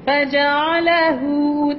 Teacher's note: Ha itu dhammah kan? Dhammah kena muncung.